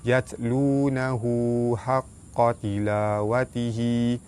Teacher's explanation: Ha dhamir, sebelum dia ada huruf yang berbaris, hukumnya mad silah qasirah. Cara baca dia dibaca panjang 2 harakat.